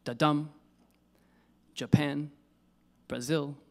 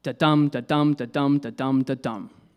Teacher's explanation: It's an unstressed syllable followed by a stressed syllable. So it sounds something like da-dum, Japan, Brazil, Holland. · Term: iamb